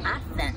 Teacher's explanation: TH▁の時にちょっとね舌を噛み具合にアテンとね発音します